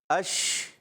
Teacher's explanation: اچھا شین میں ایک صفت پائی جاتی ہے جس کو کہتے ہیں تفشی، کیا کہتے ہیں؟ تفشی، یعنی منہ میں آواز کا پھیل جانا